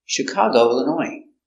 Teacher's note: Illinois comes from French too, so we have a silent S.